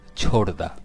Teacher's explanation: পরবর্তী ধ্বনি ঘোষ হলে দুটি মিলে ঘোষ ধ্বনি দীপ্ত হয় অর্থাৎ সন্ধিতে ঘোষ ধ্বনির পূর্ববর্তী অঘোষ ধ্বনিও ঘোষ হয় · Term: সমীভবন